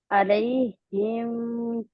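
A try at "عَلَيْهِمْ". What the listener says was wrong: लंबा नहीं खींचना क्योंकि आगे हरूफे हल्की है, ठीक है। अब आप सुनेंगे सिरातल्लज़ीना अनअमत अलैहिम गैरिल मग़दूबि अलैहिम।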